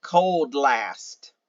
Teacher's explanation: if you run these two words together you're going to get the DL sound